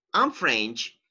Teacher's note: so your intonation goes down because you're not asking a question